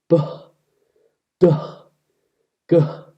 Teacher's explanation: something like b, d, g, with an extra blow of air at the end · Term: voiced aspirated stops